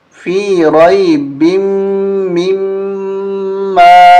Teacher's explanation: با کو میم کے ساتھ ملائیں گے اور یہاں میم پہ غنہ کریں گے